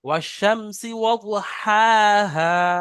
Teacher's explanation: বড় হাটা গলার মাঝখান থেকে, কণ্ঠনালীর মধ্যভাগ থেকে উচ্চারণ হয়